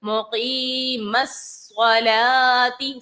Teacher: صاد ہے، اس کو پر پڑھیں گے، حروف مستعلیہ میں سے ہے